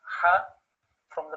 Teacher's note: Ha from the middle of throat. It's a sharp cutting sound.